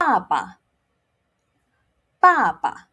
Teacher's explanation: Remember, it's a fourth tone and it's starting with a B, so we do not blow.